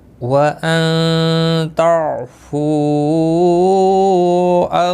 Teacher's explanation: نون ساکن کے بعد حروف اخفاء کا تا اخفاء حقیقی ہوگا · عین ساکن کو ہلانا نہیں. فو یہاں پر مد منفصل ہے 3 الف کے برابر کھینچ کر پڑھیں گے